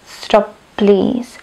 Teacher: Bolo by zbytočne ťažké povedať stop please, preto sa tam vlastne robí tá malá pauzička. Dokonca aj tá posledná spoluhláska z prvého slova tam akoby vôbec nebola.